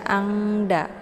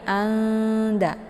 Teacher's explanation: Cara bacanya itu yaitu lebih ke samarnya ketimbang dengungnya. Jadi jangan dibaca angda ya. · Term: ikhfa a'la